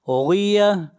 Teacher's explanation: غین حروف مستعلیہ میں سے ہے، غین کو بھی موٹا پڑھیں گے، اور آخر میں گول تا ہے، جب اس کے اوپر وقف کریں گے تو یہ ہا بن جائے گی۔